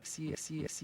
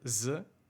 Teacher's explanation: he sharpens the S sound, when normally it sounds more like Z, z, unless you're from Switzerland or Austria.